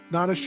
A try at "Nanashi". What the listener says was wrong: It's the right. You put you put the emphasis on the wrong syllable.